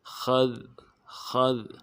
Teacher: خا موٹا کریں گے، ذال کو باریک ادا کریں گے